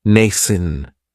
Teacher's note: That second syllable has that schwa.